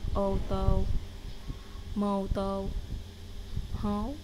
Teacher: sounds like a monotone oh. It means you start say oh but don't move your mouth to complete the word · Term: o with a hat